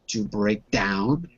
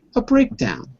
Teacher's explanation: the word stress is changing from the second to the first word